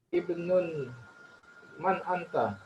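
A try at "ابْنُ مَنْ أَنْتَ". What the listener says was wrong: Ah, ini ibnunnya hilang tandanya. Ibnu man. Karena dia lagi mudhaf juga. Tadi kan ibnun man anta. Itu dihilangkan tanwinnya. Ibnu man anta. Kenapa dihilangkan? Karena di sini ibnunya juga sebagai mudhaf. Anak siapa, ya kan? Kepemilikan itu ibnu man.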